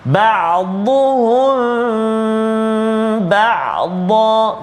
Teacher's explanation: Mim mati bertemu dengan ba. Ikhfa syafawi dengung dengan kadar dua harakat, rapatkan bibir kita.